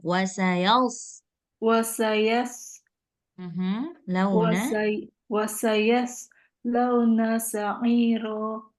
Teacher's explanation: sama dengan huruf Sin tapi dia tebal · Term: huruf Shad